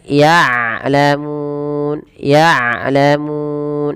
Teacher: jangan sampai dibaca dengan ya'lamun dengan hamzah, tapi dengan ain. Kemudian lafal mun ada mad arid disukun.